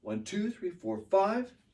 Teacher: I stress 2 and 5.